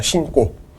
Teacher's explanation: 그래서 새 신을 신고에서의 신고는 용언의 활용형이 맞기 때문에 된소리 대기, 니은하고 기역하고 만나서 쌍기역이 되는 된소리 대기가 일어납니다. 그래서 최종적으로 발음은 신고가 되는 겁니다.